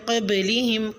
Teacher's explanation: من قبلہم میں نون ساکن پہ اخفا یعنی غنہ کریں۔ من قبلہم میں با ساکن پر قلقلہ کریں